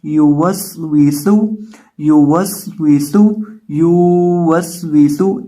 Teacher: اور آگے سین ہے، سین کے اندر ہم سٹی نکالیں گے۔ سٹی کیوں نکالیں گے؟ کیونکہ سین سٹی والے حروف میں سے ہے۔ اس کی آواز آئے گی یو وس ویسو، یو وس ویسو، یو وس ویسو۔